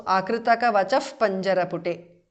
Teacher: Vachaha, akritaka vachaha, the visarga changes to upadhmaniya.